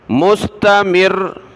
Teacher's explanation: تھوڑا را کو سختی کے ساتھ رکنا ہے، مستمر شد ہے